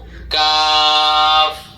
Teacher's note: 5 number মাখরাজ, জিহ্বার গোড়া থেকে জিহ্বা থেকে আগে বাড়াইয়া তার বরাবর উপরের তালুর সঙ্গে লাগাইয়া মধ্যখান পেঁচানো কাফ।